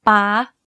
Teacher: You can hear that my pitch went high when saying this word. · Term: high tone